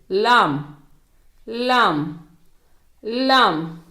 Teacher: இது நுனிநாவில் இருந்து வாயின் முன் புறத்தில் இருந்து உச்சரிக்கப்படுகிறது